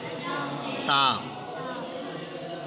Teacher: زبان کی نوک اور اوپر کے دانتوں کی جڑ سے ادا ہوتے ہیں